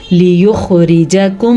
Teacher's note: خا کو بھی تھوڑا دھیان سے پڑھنا، اس کو موٹا کر کے پڑھتے ہیں